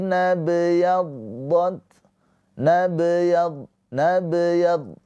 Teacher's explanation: dipantulkan dengan pantulan ringan sambil mengalir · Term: qalqalah sughro